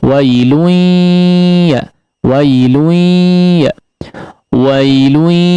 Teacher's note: wailun, ya, tanwin bertemu dengan huruf ya, diidghamkan dengan disertai ghunnah